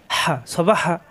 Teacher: স জিহ্বার নিচেতে চাপ দিয়ে, বা দুই ঠোঁট থেকে। হা কণ্ঠনালীর মাঝখানে চাপ দিয়ে